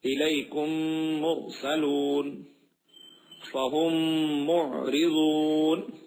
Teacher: میم ساکن کے بعد میم آئے تو میم کو میم سے ملا کر غنے کے ساتھ پڑھا جائے گا، یعنی ناک میں آواز جائے گی مکمل طور پہ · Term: ادغام شفوی